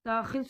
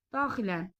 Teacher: Daxil sözündə vurğu ikinci hecadadırsa, daxilən sözündə vurğu birinci hecaya düşəcək.